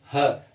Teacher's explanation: आप ह को बोलिएगा ह, जैसे ही आप बोलेंगे आपके यहाँ पे कंठ पे कंपन होगा ह। ठीक है, तो कंठ, ह का उच्चारण स्थान कंठ से होता है। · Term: स्वर तंत्रीय व्यंजन